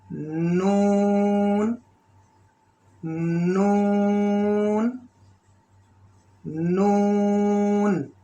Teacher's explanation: ہلکا سا غننے کی آواز، ہلکا، اور نون سے آواز غننے کی نون سے نکلتی ہے. مخرج اس کی زبان کا فرنٹ اوپر کے 6 دانتوں کے جو مسوڑے ہیں ان سے لگائیں گے اور نرمی سے اس کو ادا کریں گے